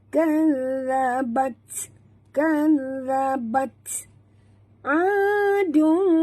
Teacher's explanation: huruf zal sahabat, jaga makhrajnya di hujung lidah. Dan zal yang pertama mati, zal yang kedua berbaris di atas, dan ta di sini tanda mati, maka kita kena bunyikan hamasnya.